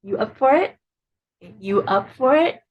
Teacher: that intonation Rises at the end um to indicate it's a question